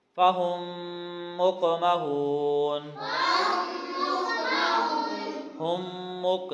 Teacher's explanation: فہم مقمحون، ہم مق، یہاں پہ ہم نے گنہ کیا ہے، میم کے بعد میم آ رہا ہے، ادغام ہو رہا ہے